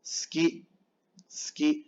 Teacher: La U casi no suena.